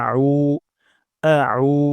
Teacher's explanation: উমজা হবে না এখানে আইন উচ্চারণ করতে হবে এটা খুবই গুরুত্বপূর্ণ আমরা আইন উচ্চারণ করব গলার মাঝখান থেকে